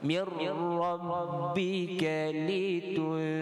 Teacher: Mir rabb tanpa dengung, kita baca dengan syaddah mir. Rabb tekan sedikit. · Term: idgham bila gunnah